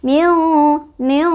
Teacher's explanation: nunnya dibaca samar ya, tidak terlalu diidharkan, tidak terlalu jelas, tidak juga diidgomkan, tidak juga dimasukkan, jadi diantaranya ya, miu, miu, dan si lidah kita sudah bersiap-siap ke huruf shin sama didengungkan miu, miu gitu, miu syaril.